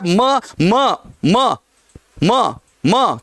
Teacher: ओष्ठ स्पर्श कर रहे हैं और नाक का प्रयोग हो रहा है।